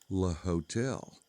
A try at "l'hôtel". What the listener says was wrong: It's pronounced l'hôtel. There's no H in French.